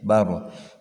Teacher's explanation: Bar itu dibaca tarkik ya. Ra mati sebelumnya ada harakat fathah ya.